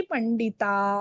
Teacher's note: पंडिता हा ता दीर्घ आहे. त्याच्यानंतर विसर्ग येतो, विसर्ग ही दीर्घच उच्चारण होणार. ता हा लक्षात आलं.